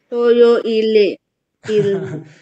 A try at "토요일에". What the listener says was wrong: 일레가 아니고 토요 일에. 토요 일에예요. 토요 일에.